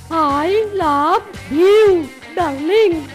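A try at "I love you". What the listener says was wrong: হয়নি গো, ভিউ বলো না, ইউ বলো।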